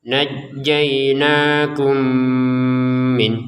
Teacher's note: Kemudian ada mim sukun bertemu dengan mim. Maka mim yang pertama masukin kepada mim yang kedua disertai dengan dengung ya.